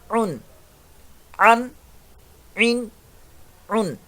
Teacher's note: عین میڈل part of throat حلق کے درمیان والے حصے سے